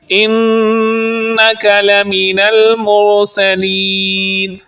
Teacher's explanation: مرسلین کی را کو آپ پر یعنی موٹی آواز میں پڑھیں گے، سین کو سیٹی جیسی آواز میں پڑھیں گے اور لین کو تھوڑا سا لمبا کریں گے مد عارض کی وجہ سے۔